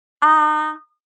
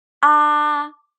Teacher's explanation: The first tone, ah, high and flat. Ah.